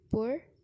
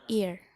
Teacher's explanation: Diftong turun karena posisi bunyi pertama lebih tinggi dari bunyi kedua